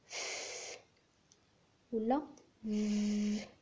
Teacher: are sounds formed with the upper teeth and the lower lip. لابيودنتلز هما الحروف اللي كنتجوهم باستعمال الأسنان العلوية والشفة السفلى، مثلا صوت ف ولا ف.